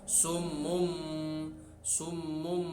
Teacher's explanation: Kemudian bacaan yang berikutnya iklab, yaitu jika nun sukun atau tanwin berhadapan dengan huruf satu ba, maka nun sukun atau tanwin dibaca beralih menjadi mim, suaranya beralih menjadi mim